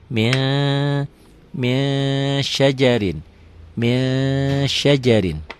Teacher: Min ditulisnya, dibacanya jadi min syajarin. Bukan hanya n ditambah g aja, ditahan juga, ada ditahan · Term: ikhfa